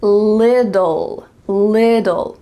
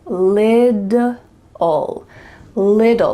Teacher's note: You see there's 2 T's in the middle of this word, but really in American English, those T's are gonna become D sounds. So it's gonna sound like lidl, little, like a lid that you put on a container, little.